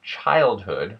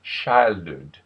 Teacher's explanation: the CH sound tends to turn into an SH sound